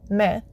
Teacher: don't pronounce the N at the end of the word. It's more of a nasalization sound.